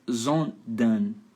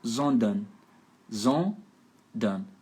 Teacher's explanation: Esse final ERN, você faz an.